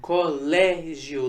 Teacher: Colégio não foi a última sílaba tônica foi a penúltima sílaba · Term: paroxítona